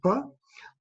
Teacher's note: the letter P gets generated from the lips